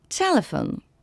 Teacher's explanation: L'accent tonique est sur la première.